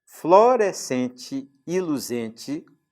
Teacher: Florescente e luzente são palavras que rimam e as duas são paroxítonas, portanto, também rima feminina.